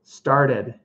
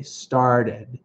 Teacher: And for those of you learning, British English, they might say started, but American English, the way my accent is, I would say started. Even though I spell with a T, I say with a D. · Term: D pronunciation